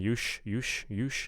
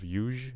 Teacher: I'm hearing sh instead of zh. So we just want that consonant to be voiced.